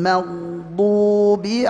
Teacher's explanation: Karena ghain sifatnya rikhawah, artinya mengalir ya. dengan tebal ya, suara menggema tetap.